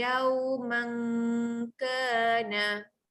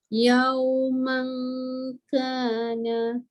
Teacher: ifa hakiki dengung panjang, lidah dalam naikkan ke atas.